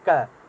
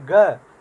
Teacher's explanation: अब देखिए अघोष को समझने के लिए आप जैसे क बोलेंगे, जैसे बोलेंगे क, उसके बाद बोलेंगे ख, क और ख बोलने में जो है हमारी स्वर तंत्रियों में उतना नाद नहीं उत्पन्न हो रहा है, उतनी गर्जना नहीं उत्पन्न हो रही है।